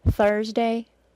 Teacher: Thursday has an unvoiced th sound followed by a schwa + R sound · Thursday, because it has a schwa plus R sound, has an R sound that lasts longer than 3 and through.